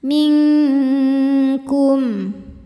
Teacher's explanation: Ming ada hukum ikhfa ab'ad karena nun sukun menghadapi huruf kaf. Cara bacanya nun samar menuju makhraj huruf kaf disertai dengung. Dengungnya besar karena kaf makhrajnya jauh dari nun.